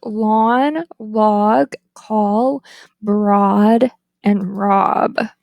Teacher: The tongue is low mid, back, the lips are rounded, and it is tense. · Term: open O